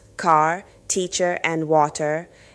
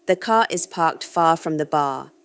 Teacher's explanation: Curl your tongue tip slightly backward, what linguists call retroflex, without touching the roof of your mouth. This creates the characteristic muffled quality you hear in American speech.